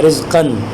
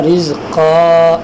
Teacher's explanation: لیکن اگر یہاں پہ آپ وقف کریں تو یہ رزقاً سے بنے گا رزقا، ایک الف کے برابر کھینچ کر پڑھیں گے اور یہ الف پڑھنے میں آئے گا